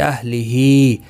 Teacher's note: ہا کے نیچے کھڑی زیر ہے، ایک الف کی مقدار کے برابر کھینچ کر پڑھیں گے